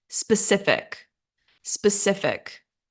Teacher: and stress on second syllable